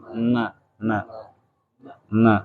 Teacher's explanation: Ujung lidah dengan gusi atas agak keluar sedikit dari makhrajnya la adalah tempat keluarnya nun.